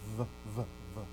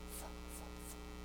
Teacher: Same thing, right? You put your top teeth on your bottom lip, but one's voiced, v, v, v, and one is unvoiced.